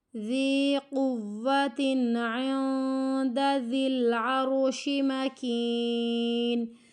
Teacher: انہو لقول رسول کریم، انہو لقول رسول کریم، ذی قوت، ذی کو کھینچنا ہے، حروف مد ہے